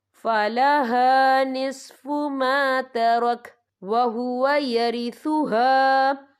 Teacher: یہ دیکھیں وَهُوَ يَرِثُهَا، یہاں پر الف مدہ بھی ہو رہا ہے، خالی الف سے پہلے زبر ہے اور اس میں چھوٹی سی مد بھی ہے، تو ہم یہاں 3 یا 4 حرکت کے برابر کھینچ کے پڑھیں گے